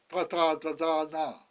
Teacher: your tongue is looped back at the back of the roof of your mouth.